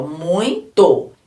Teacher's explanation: o som que eu falei mais forte é o ó eu demorei mais nele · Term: decrescente